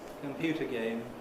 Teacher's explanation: computer game stressed on the first element of the compound and within that on the stressed syllable